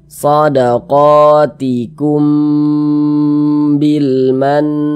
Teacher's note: mim sukun yang bertemu dengan huruf ba maka hukumnya adalah Ikhfa Syafawi ya maka ini kita dengungkan jadi suaranya itu kita tahan kita Pan panjangkan sejenak shodqotikum kumnya